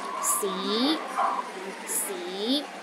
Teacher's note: the second tone start with the low pitch and Rises to a high pitch